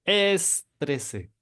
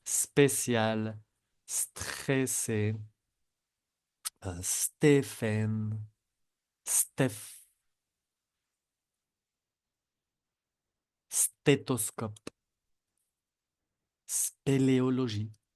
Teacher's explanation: no tienen que pronunciar la E antes.